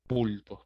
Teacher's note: La palabra pulpos, en este caso, tiene la voz en la sílaba pul, ¿sí? Y si te fijas, esa sílaba es la penúltima, ¿no? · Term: palabra grave